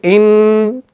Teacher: नाक के बांसे से आवाज निकल रही है पूरी की पूरी, यानी इसकी सिफत गुन्ना की है जो नाक के बांसे से अदा होती है।